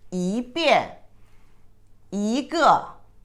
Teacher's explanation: 一 put ahead of, in front of the fourth tone character, it pronounced as second tone